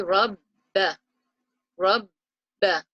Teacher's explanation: We will say rabba, rabba. So we are doubling up the sound of the ba, and because of the sukoon, it joins to the ra that's before it